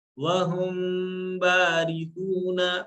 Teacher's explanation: میم ساکن کے بعد اگر بے ہو تو وہاں پر میم کی آواز کو تھوڑی دیر کھینچ کے پڑھیں گے